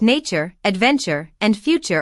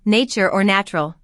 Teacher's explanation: For these terms, we say ch rather than t, especially in American English.